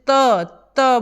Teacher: यह दांतों से टच करती तो दंत होता है